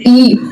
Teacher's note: संवर्त स्वर मुख द्वार बिल्कुल बंद रहता है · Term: संवृत स्वर